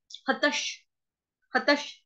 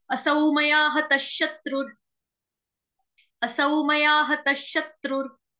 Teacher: विसर्ग का उच्चारण होगा आधे श से